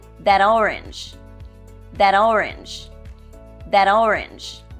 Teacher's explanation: it's linked for example if I were to say that orange you will probably hear me change the final consonant T sound to a D sound